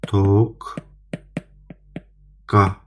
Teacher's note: Deməli, qoşa qda birinci q-nın birinci q özünün kar qarşılığına çevrilir. Yəni q k q-ya çevrilir.